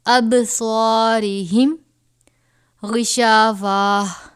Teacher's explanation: اب با حروف قلقلہ میں سے ہے، جنبش دے کر پڑھیں گے.